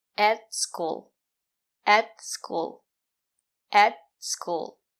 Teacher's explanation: The sound is more closed. And the letter t is a stop t. Put your tongue up and stop the air. · At is not stressed, we pronounce it as e, et. The sound is more closed. And the letter T is a stop T.